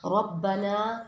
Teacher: ربنا کے را کو پر پڑھا جاتا ہے کیونکہ را کے اوپر زبر آ رہا ہے